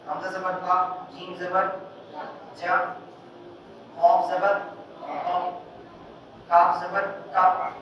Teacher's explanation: یہ جو زور دے کے شدت کے ساتھ بولنا یہ اس کی صفت ہے